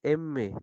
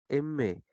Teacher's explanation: son aquellas en las que por debajo del velo del paladar el aire resuena en las fosas nasales y vibra en las aletas de la nariz saliendo por aquí al exterior · saliendo por aquí al exterior Por eso te decía no m te das cuenta que el airecito sale por tu nariz por tu fosa nasal